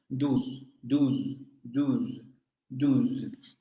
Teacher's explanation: Posterior cerrada labializada. Igual que el español, posterior cerrado labializado.